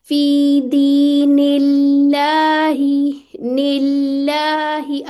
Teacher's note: जलाला से पहले कसरा आ जाए तो इसमें जलाला मुरक्क पढ़ा जाता है